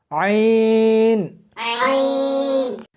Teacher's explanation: اس کو حلق میں سے سختی کے ساتھ نکالنا ہے